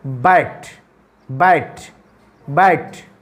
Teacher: ब यहाँ पर वाइब्रेट करता है ब, तो जब हम वाइब्रेट करता है तो उसी को कहते हैं वॉइस्ड साउंड